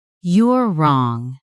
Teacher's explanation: The words are short, but the falling intonation can sound final, almost like a door being closed.